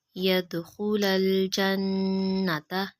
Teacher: نون مشدد پہ غنہ کریں گے